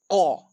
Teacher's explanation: कंठ से बोला जाता है अ।